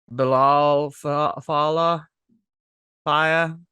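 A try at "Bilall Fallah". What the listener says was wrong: It's not Spanish, but it's not Spanish. So you pronounce both L's.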